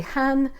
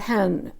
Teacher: which is first tone, not Han fourth tone